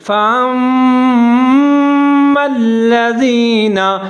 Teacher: زبر ہے، آگے میم مشدد ہے، اس کے اوپر زبر ہے، حمزہ اور میم دونوں کو ملا کے پڑھیں گے، غنہ کریں گے، یہاں پر ادغام ہو رہا ہے